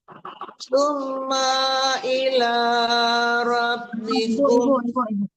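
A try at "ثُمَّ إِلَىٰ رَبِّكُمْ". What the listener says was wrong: Ibu sering banget summa. Kenapa dipanjangkan ma-nya? Hati-hati hurufnya nggak panjang dan ditahan. Tapi ibu panjangkan ma-nya tidak panjang. Alif berharakat. Ya kalau alifnya tidak berharakat baru panjang ma-nya. Alifnya kan ada harakatnya.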